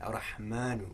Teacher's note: Now the mim, what we want to do is create a long vowel for the mim, a long fatha vowel.